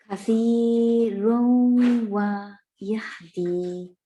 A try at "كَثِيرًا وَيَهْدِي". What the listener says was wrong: Okay, so what you are doing actually is you are anticipating the wow and you are already rounding the lips in kathiran. Yeah, you're doing this instead of this. You're saying kathirun, kathirun.